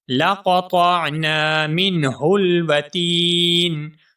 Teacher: وتین میں جو تا ہے اس تا کو ہم ایک الف کے برابر کھینچ کر پڑھیں گے کیونکہ یہاں پر یا مدہ ہے.